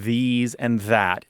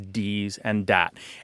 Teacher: at least a third of Americans pronounce the words like these and that as dees and dat